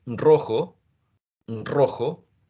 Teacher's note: So you say rojo, rojo, and there's a sound called trill, right, at the beginning